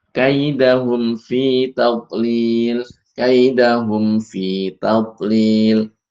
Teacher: ketika mim sukun bertemu dengan fa jangan sampai dibaca samar karena makhrajnya makhraj keduanya berdekatan.